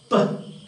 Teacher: Per is a bilabial, voiceless plosive.